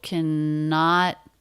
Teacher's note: This is a two-syllable word. Stress on the second syllable.